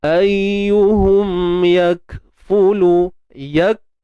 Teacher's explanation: Untuk kaf yang mati ni macam biasalah, tuan-tuan dan puan, kita kena tahan dulu suara, iaitu sifat syiddah. Tahan dulu yak, kemudian barulah sifat hams, yang mana kita kena lepaskan ataupun alirkan nafas kita ataupun udara. Ayyuhum yakfulu, yak, dia bukan yak.